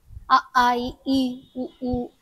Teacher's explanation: ఈ అచ్చులు పలుకుతున్నప్పుడు పెదాలు కలవకపోవడమే కాదు నువ్వు క్లియర్ గా అబ్సర్వ్ చేస్తే ఈ సౌండ్ మొత్తం నీ కంఠం నుంచి బయటికి వస్తుంది.